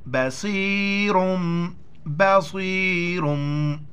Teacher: دو پیش تنوین کے بعد با آ جائے تو وہاں پر دو زبر دو زیر دو پیش کو میم کے ساتھ ملائیں گے اور ناک میں آواز پیدا کریں گے